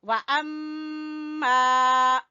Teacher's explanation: मीम मुशद्दद का गुन्ना करते हुए आगे मिलाएंगे